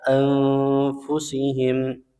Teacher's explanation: nun sukun bertemu fa anfusihim, ya, hukumnya ikhfa dibaca samar dan dengung